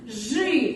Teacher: Пишем и, а произносим мы. Ж звук всегда будет твердый.